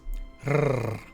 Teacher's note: Now, the R is quite important. It is always rolled.